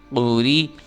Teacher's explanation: قاف پیش قو، را زیر ری، آپ نے دیکھا قاف کو موٹا کر کے را کو باریک کر کے پڑھنا ہے